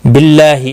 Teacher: अल्लाह का लाम ज़ेर की वजह से बारीक पढ़ा जाएगा, इसके ऊपर खड़ी ज़बर है, 1 अलिफ के बराबर खींच कर पढ़ेंगे।